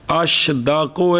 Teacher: قبل دال محملہ، کتھے دال محملہ سے پہلے شین ہو تو اس شین کو جیم اور شین کے درمیان کر کے پڑھنا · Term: مخلوط